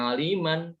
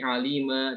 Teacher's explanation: kalau dia waqaf bukan aliman tapi alima jadi mad iwad